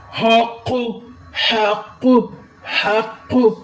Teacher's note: کاف کو موٹا کرے اور ہا کو حلق سے آواز دے